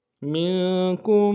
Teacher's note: کاف کو میم ساکن کے ساتھ ملانا ہے, میم ساکن میں غنہ کریں گے · فا کو سین کے ساتھ ملانا ہے, سین کے اوپر تشدید ہے, زور دیں گے